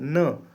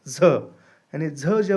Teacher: हमारी जो जीवा है वो ऊपरी तालु को थोड़ी सी ऐसी स्पर्श तो कर रही है लेकिन थोड़ा सा ऐसा रब कर कर रही है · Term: स्पर्श संघर्षी व्यंजन